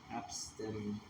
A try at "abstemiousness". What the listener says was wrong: That's not abstinence. There's an M in there. I was going to say abstinence, but then I looked at the actual letters, and that's not what it says. Abstemiousness.